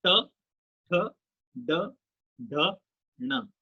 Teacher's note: आपकी जीभ जो है उल्टी होकर तालू से लग रही है, मूर्धना से लग रही है।